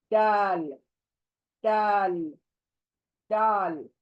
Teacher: जबान दांतों के पीछे जड़ को लग कर अदा होगा ये दाल